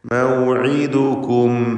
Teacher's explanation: ഐൻ വ്യക്തമായി മഖ്റജിൽ നിന്ന് ഉച്ചരിക്കേണ്ട, പ്രത്യേകം ശ്രദ്ധിക്കേണ്ട അക്ഷരമാണ്. തൊണ്ടയുടെ മധ്യം, അന്ത്യത്തിൽ വന്ന സാക്കിനത്തായ മീം.